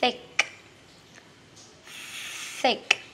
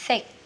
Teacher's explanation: Th mình đưa lưỡi ra nhá. Âm này là âm vô thanh à.